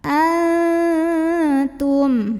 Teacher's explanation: nun sukunnya dibunyikan samar-samar menuju huruf ta disertai dengungan. Jadi ini bukan an, tidak jelas n-nya, tapi samar menuju ta. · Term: ikhfa aqrab